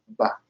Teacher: es bilabial, es explosivo